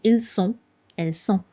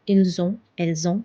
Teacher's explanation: The sound is s. But with avoir the sound is z.